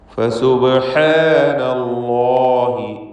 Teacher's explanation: അല്ലാഹ് വീണ്ടും വന്നു തഫ്ഖീം ചെയ്ത് ലാമിനെ ഉച്ചരിക്കുക.